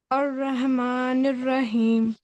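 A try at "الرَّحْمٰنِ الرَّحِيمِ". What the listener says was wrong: वाला हा है, रह. अर्रहमानिर रहीम. अर्रहमानिर रहीम. हाँ पे प्रैक्टिस कीजिए, ठीक है. अर्रहमानिर रहीम.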